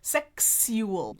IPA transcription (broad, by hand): ˈsɛks yu əl